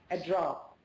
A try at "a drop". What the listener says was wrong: Well, try to extend that sound, that vowel sound. Try to extend it. A drop.